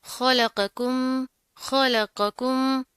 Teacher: खा मोटा है, लाम बरीक है, कौफ आगे फिर मोटा है और फिर ये काफ बरीक है।